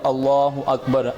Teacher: اللہ کا جو لام ہے اس کو پر کرنا ہے، جیسے کہ کل بھی بتایا کہ اللہ کے لام سے پہلے حرف کے اوپر زبر یا پیش ہو تو پر پڑھیں گے اللہ اکبر، ٹھیک ہے۔